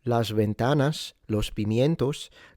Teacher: it's almost a sh, not exactly a sh, it's in between the s frontal and the full-on sh, sh. It's in between, it's kind of the X sound in Mandarin, like for xie xie or xue xi.